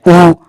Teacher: ऐसे स्वर जिनको हम बोलते हैं ना तब होठों की आकृति क्या हो जाती है, वृत्त का मतलब वृत्त के आकार की हो जाती है, गोल हो जाती है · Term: वृत्तामुखी स्वर